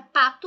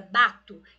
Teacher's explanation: eu troco pelo B por exemplo que também é bilabial mas é sonora